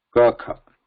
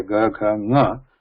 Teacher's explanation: The other kind of effort is nada and ghosha. Ghosha is breath, just the breath. There is no vibration. Nada, there is vibration.